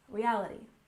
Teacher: stress on the second syllable in reality